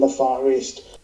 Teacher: he linked the words far and east, forming forest